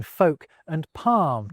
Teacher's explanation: the L's in folk and palm disappear for a lot of people